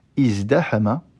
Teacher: il se change en dal quand la première radicale est un zaï